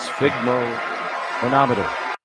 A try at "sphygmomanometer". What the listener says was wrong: Little pregnant pause in the middle. Not bad though.